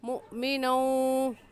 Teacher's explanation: مؤمنوں میں حمزہ ساکن ہے اور حمزہ ساکن پر جھٹکا دیتے ہیں، اس وجہ سے ہلکا سا جھٹکا دیں گے